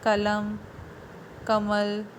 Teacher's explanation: तो अंत का जो अ है हिंदी में उच्चारित नहीं होता।